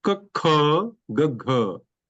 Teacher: Second and fourth are mahapranas. So when you speak, more air comes out from the mouth.